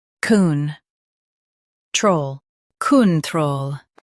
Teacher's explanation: Emphasize troll and keep kun soft.